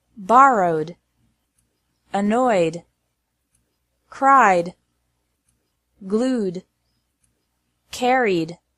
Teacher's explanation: e d is pronounced like d after verbs ending in a vowel sound